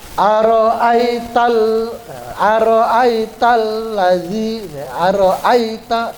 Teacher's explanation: Ya Sukun di sini tidak berfungsi sebagai huruf mad enggak boleh dibaca panjang · ai-nya tidak boleh dibaca panjang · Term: pendek